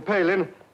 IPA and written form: ˈpeɪlɪn (Palin)